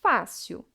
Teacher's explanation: A sílaba tônica é a penúltima sílaba. A última seria sil, a penúltima fá. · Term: palavra paroxítona